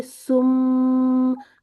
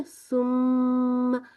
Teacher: आपको ना एक छोटी सी वो वाइब्रेशन सी भी अपने होंठों पे महसूस होती है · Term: मीम